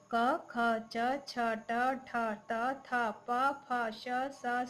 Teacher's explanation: जिन ध्वनियों के उच्चारण में स्वर तंत्रियों में कंपन नहीं होता, उन्हें अघोष वर्ण कहते हैं।